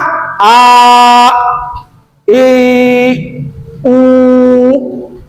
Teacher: Jadi hamzah itu a ataupun i ataupun u dari aksol halki paling bawah tenggorokan. Nah, maka dibuka a, i, u.